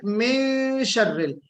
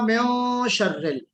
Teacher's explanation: بے شک آپ نے اخفا کیا من شر، لیکن اس اخفا کو آپ نے موٹا پڑھا ہے